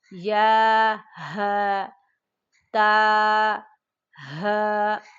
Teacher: ہا بھاری آواز میں پڑھیں گے، 2 آنکھوں والا، سینے کی طرف حلق کا سب سے نچلا حصہ وہاں سے ادا ہوتا ہے۔